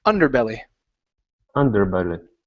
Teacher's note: So, our stress is at the very beginning of the word.